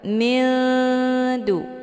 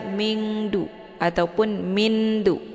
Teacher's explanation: Makna aqrab itu dekat antara makharijul huruf nun dengan da, posisinya saling berdekatan. Cara bacanya, nunnya disamarkan kemudian siap-siap menuju ke huruf dal. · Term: ikhfa aqrab